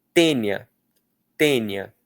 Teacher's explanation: O i é bem fraquinho, o a é mais forte. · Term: semivogal